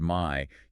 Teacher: The long I sound, for instance, isn't one sound. It starts wide and shifts narrow. If you say the word my, you can physically feel your mouth change shape from open to closed. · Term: diphthongs